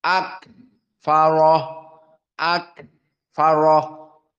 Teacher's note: Jika disukunkan jaroyan an-nafs. Maknanya ada nafas yang keluar.